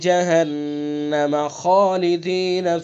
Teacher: جہنم غنہ کریں گے چونکہ نون مشدد ہے